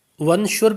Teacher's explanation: ونشر پہ جو ہے غنہ کریں گے، کیونکہ یہاں پر نون ساکن کے بعد حروف اخفا میں سے شین آ رہا ہے